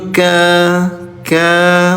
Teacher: Tuh fathah bertemu dengan alif. Kafnya panjang. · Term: panjang dua harakat